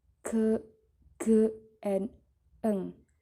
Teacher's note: The active articulator is the tongue body and the passive articulator is the soft palate. Jadi yang dinamakan velar yaitu artikulator aktif adalah badan lidah dan artikulator pasifnya adalah langit-langit lunak.